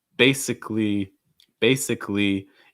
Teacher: when this is used as a filler word of sorts again it's going to have some of that rising intonation